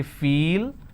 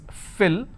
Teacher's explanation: the first one is a long vowel sound that's why we say feel second one is short vowel which is fill